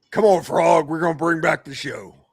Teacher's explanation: No, no, no no Cajun accent. Just the gravel's there.